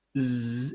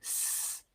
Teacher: but it is voice so i'm i'm using my vocal cords my mouth shape is the same my tongue my lips are all doing the same thing but the difference z is voiced and s is not voiced